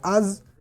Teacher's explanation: زا یہ حروف صفیریہ میں سے بھی ہے، اس کے بارے میں ہم نے پہلے سبق میں پڑھا تھا، تو اس میں سیٹی کے آواز نکالیں گے، لیکن ذال کو ادا کرتے وقت سیٹی کی آواز آپ نے نہیں نکالنی۔ زا کو ادا کرتے وقت آپ نے سیٹی کی آواز نکالنی ہے، آواز میں قدرے سختی لانی ہے۔